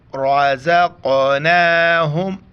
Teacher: را کو موٹا کر کے پڑھیں گے کیونکہ را کے اوپر زبر ہے